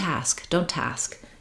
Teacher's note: you don't want to hear that t we want to drop it